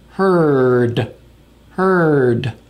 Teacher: it's the tip of the tongue touching the alve Ridge and it's light and quick